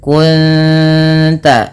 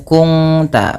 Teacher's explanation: menyamarkan bunyi suara nun kepada ta dan ditahan bunyi dengungannya 2 harakat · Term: ikhfa hakiki